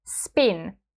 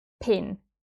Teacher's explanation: Finnish P is never aspirated. It's like in the word spin, not like in the word pin.